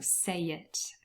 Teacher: between say and it, there is intrusion and there's a y appearing